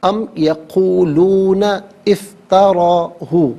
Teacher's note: ام یقولون افتراہ، ملا کر پڑھنے کی صورت میں یقولون میں نون پر زبر ہے، سے افتراہ کے فا کے ساتھ ملائیں گے، درمیان سے الف یعنی حمزہ کو حذف کیا جائے گا